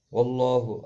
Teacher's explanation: اللہ کا لام زبر کی وجہ سے پر پڑھا جائے گا